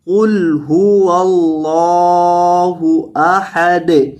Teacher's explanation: دال کو ساکن کریں گے اور ہلا کر پڑھیں گے